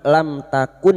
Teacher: Sekarang di sini kita wasal atau terus kita uraikan pada kalimat lam takun mim sukun bertemu ta idhar syafawi. Mim sukun dibaca jelas tanpa mendengung. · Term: idhar safawi